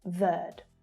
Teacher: So the final E on verde here is silent when spoken in English. Verde. And there's that plural islands again.